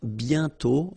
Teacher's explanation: You write it, but you don't pronounce it. And then the final T is not pronounced.